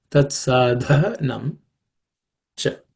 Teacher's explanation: Then this word, next word is tat sadhanam. Sadha, that dha is also the fourth letter in the ta varga, so it has to be aspirated